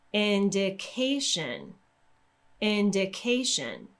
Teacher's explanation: take a look at the word indication can you hear how my pitch starts off at a lower level and then it rises and goes back down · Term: rise in pitch